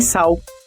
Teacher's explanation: O processo de vocalização acontece quando o som consonantal é pronunciado como uma vogal alta posterior, ou seja, um U em final de sílaba, como em sal. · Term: vocalização da lateral alveolar